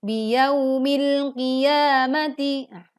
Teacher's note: Biyaumil mempunyai pelajaran Izhar Qamariyah. Huruf Alif lam bertemu dengan huruf qaf, sehingga terbaca dengan jelas.